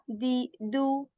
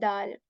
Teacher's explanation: of the tongue at the back of our upper teeth right tip of the tongue it touches the uh back part of our upper front two teeth or you can say like the roots of um behind the